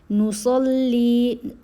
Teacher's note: صاد کو موٹا پڑھنا ہے، لام اور لام سے ملانا ہے مضبوطی سے ، کیونکہ لام کے اوپر تشدید ہے نا، ساتھ ہی کیا